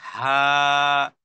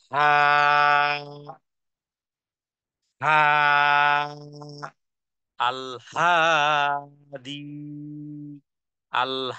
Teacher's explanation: হা এর মাখরাজটি হলো হলকের শুরু থেকে উচ্চারণ করা যেমন হা শ্বাস আছে শ্বাসটাকে ছেড়ে দিলেই হয়ে গেল হা